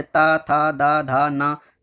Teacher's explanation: दंत जिनसे जीव दांत से टच हो जाए